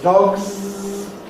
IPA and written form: dɒgz (dogs)